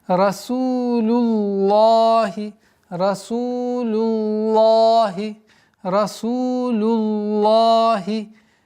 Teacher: Об этом мы говорили, когда при произношении лафзуль джаляля слова Аллах у звука лям есть долгота в размере двух огласовок